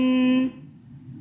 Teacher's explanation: آمن، تو اس کے نون ساکن کے آگے میں پہلے بھی بتا چکی ہوں، اگر اخفاء کا حرف آئے جیسے کہ یہ سا اخفاء کے حرف میں سے ہے، تو ہم اس کو پڑھیں گے آمن. مطلب ہم نے اس میں جو نون کی آواز آ رہی ہے اس پہ ہم نے اخفاء کیا، گنہ کیا 2 سیکنڈ کے لیے